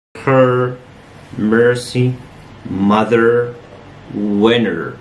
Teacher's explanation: The tip of the tongue is curled up a bit and it's pulled back. معناه إن مقدمة اللسان curled معناها إن هي مقلوبة للخلف and pulled back, ملفوفة ومقلوبة للخلف. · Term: vowel sound er